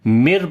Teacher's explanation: نون ساکن کے بعد یہ را ہے، تو یہاں پر ادغام بغیر غنے کے کریں گے، مر پڑھیں گے، نون کی آواز کو نہیں پڑھیں گے، ٹھیک ہے۔